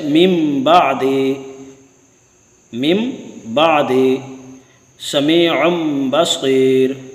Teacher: نون ساکن اور تنوین کو میم سے بدل دیں گے اور غنہ کے ساتھ پڑھیں گے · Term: اقلاب